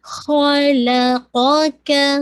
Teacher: خا کو ہیوی، لام لائٹ، قاف ہیوی، کیف لائٹ